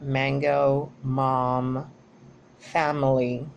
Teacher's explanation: By the manner of articulation, This sound is nasal, which means that is produced when the velum closes or is lowered. So the air comes through the pharynx and comes directly from the nasal cavity and is then protruded by the nose. · is bilabial, which means that it is created by the movement of the lips, both lips, the upper lips and the lower lips.